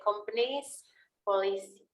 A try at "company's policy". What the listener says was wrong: Companies. Ini ada S-nya dibaca. Company's policy.